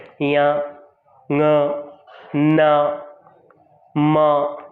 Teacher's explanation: यमंगणनानाम नासिका, प्रत्येक वर्ग का अंतिम अक्षर अर्थात पंचम अक्षर वह नासिका वर्ण होता है। अर्थात जब हम इन वर्णों का उच्चारण करते हैं तब हमें नासिका की सहायता से ये वर्ण बाहर आते हैं